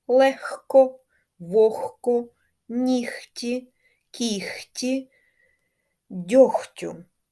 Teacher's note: відбувається зміна дзвінкового г перед глухими к або ш на Х